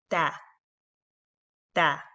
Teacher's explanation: The exit is the tip of the tongue at the roots of the two upper central incisors. So just put your tongue at the root of the two frontal teeth and you say ta, ta.